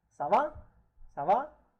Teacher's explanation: Again, last word, intonation of it is quite raised up.